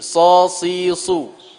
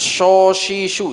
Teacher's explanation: Shin itu jauh sekali makhrajnya sama so. Kalau so itu ujung lidah, shin itu tengah lidah. · Ihdinasi, so si su, lebih dekat ke sin dia, sod itu. Makhraj sod itu lebih dekat ke sin, jangan ke shin.